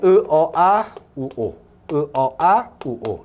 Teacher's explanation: 요건 전부 다 후설 모음 되겠고요